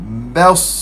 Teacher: Huruf ba makhraj huruf ba kat mana? Syafatan ni dua bibir. Bibir atas dan bibir bawah bertangkut dua.